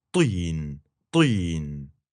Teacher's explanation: you're going to the vowel so quickly that you're going to skip that puff of air entirely. You'll start that T with your tongue pulled up and back, to, to, and then you'll go straight to the vowel, teen, teen.